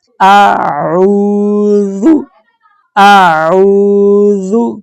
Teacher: یہ جو عین ہے اس کی آواز حلق سے آئے گی۔ عین کے ساتھ واو ہے، واو جزم والی، اس لیے ہم عین کو 2 حرکات کی مقدار لمبا کریں گے۔ سادے الفاظ میں بتاؤں تو تقریباً 1 سیکنڈ تک لمبا کریں گے۔